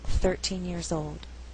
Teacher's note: So if I said I was 13 years old, stress is on the first syllable